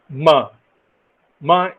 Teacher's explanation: nasal passage we lower the read limb or the soft path so MA is a voiced bilabial